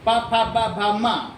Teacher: होठ से होठ टकरा है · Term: होष्ठव्य